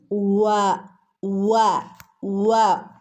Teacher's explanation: രണ്ട് ചുണ്ടുകൾ കൂർപ്പിച്ച് വിടർത്തിയിട്ട് വേണം പറയാൻ